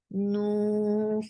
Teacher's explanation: 4 counts long, and circle your lips very nicely